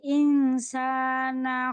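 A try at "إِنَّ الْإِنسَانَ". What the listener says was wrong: Harus dibulul gunnahnya. Bukan in. Dengan idhar. Antara idhar dan idgham.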